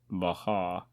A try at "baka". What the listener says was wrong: You're missing the K in the yeah, baka.